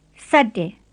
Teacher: Here's the tape to copy, and make sure you keep the S tight, and don't let any H sound come between it and the ate. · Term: plain S